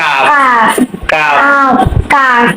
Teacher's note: জিহ্বার গোড়া থেকে গোড়ার একটু আগে তার বরাবর উপরে তালুর সঙ্গে লাগাতে হবে।